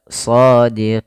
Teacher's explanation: Panjangkan dulu baru matikan nun ya. shodqin atau enam harakat shodiqin.